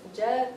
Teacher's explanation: jugat with a t it becomes a a d sound but it's not a d with a tongue forward it's D once again with the tongue in the middle of the mouth